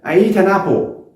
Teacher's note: como si fuera que todo está pegado y se alarga la letra eat, diciendo eat, y no se pronuncian por sílaba porque en inglés se pronuncia por acento.